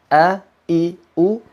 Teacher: ketika kita mengucapkan huruf hamzah a i u e maka pasti disini akan ada getaran pita suara kita bergetar a-kembar Dian Hamzah memiliki sifat tercekik atau tipis dimana ketika